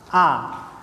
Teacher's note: Ketika mengucapkan hamzah, suara terus tertahan.